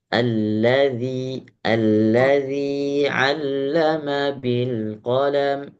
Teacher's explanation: Tipiskan sedikit lagi huruf dzanya